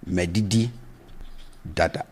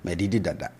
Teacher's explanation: So the tone is low on both syllables.